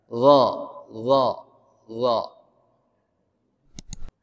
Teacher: Lidahnya ke gigi, ke pangkal gigi atas. Gigi seri atas.